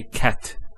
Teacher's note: a stop on the letter t so we say cat so the T doesn't have any vowel associated with it it's actually just a stop on the T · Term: sukoon